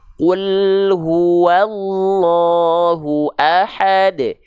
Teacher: Kalau huruf qaf dia tidak mengalirkan nafas, nama sifatnya adalah jahar